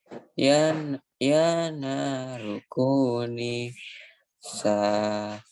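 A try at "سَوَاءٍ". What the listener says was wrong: Sa'a itu sa'a ada A-nya. Ba-nya enggak. Ba-nya pendek ya.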